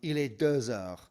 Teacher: Il est 2 heures. And you pronounce that X on the end as a Z sound, a Z, because the H counts as a vowel in the next word at the beginning of heure.